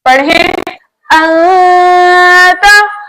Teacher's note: आपने देखा नून साकिन के बाद बकिया बचे 15 हुर्फों में से ता आया तो हमने नून साकिन को इसके मखरज में इस तरह पढ़ा कि ना कामिल इदगाम हुआ और ना कामिल इजहार हुआ, बल्कि हमने नून साकिन की आवाज को नाक में हल्का सा छुपा कर पढ़ा। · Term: इख्फा हकीकी